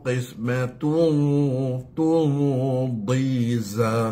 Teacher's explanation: Okey, dua-dua kena tebal, ikhfa yang tebal pada qaf dengan huruf dad sama.